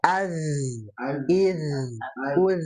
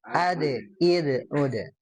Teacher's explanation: ketika disukunkan zal itu dia rakhwah